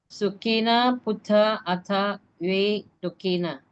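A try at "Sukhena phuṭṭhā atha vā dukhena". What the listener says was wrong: So here ve, here va. Ve va.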